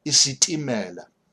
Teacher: Notice it is T without the H, which means it's a slightly implosive T. If it was with an H, it would have been isitimela.